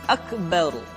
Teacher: keempat yang mesti dibaca tebal adalah beberapa kondisi huruf [Musik] ro huruf ro mesti dibaca tafkhim atau dibaca dengan suara yang tebal ketika dia berharakat fathah atau berharakat dah kemudian ra sukun didahului